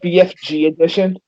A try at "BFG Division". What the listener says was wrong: You said edition. BFG edition.